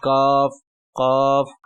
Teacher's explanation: इसमें आपने जबान की जड़ को कवे की जड़ में लगाने से अदा करेंगे